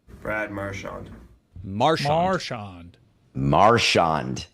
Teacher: He puts the emphasis on the first syllable.